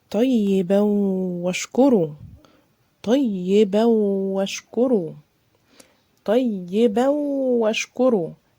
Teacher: اديتها غنة ودخلتها ادغمتها في الواو، وده طبعا ادغام ناقص